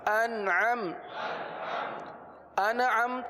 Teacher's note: نون پر قلقلہ نہیں ہوتا، نون میں آواز کو جمائیں گے ، قلقلہ نہیں ہونے دیں گے. انعم تا زبر تا انعمت